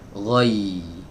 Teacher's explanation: Suaranya berbeda ya teman-teman ya. Jadi jangan sampai kita mengucapkan huruf ya ini dari hidung keluarnya